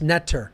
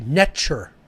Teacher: the t is a CH sound hard like TCH